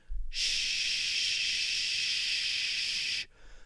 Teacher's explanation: the air that's being blown out is not coming through your nose. It's going over your tongue. Your tongue is turned up slightly. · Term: sh sound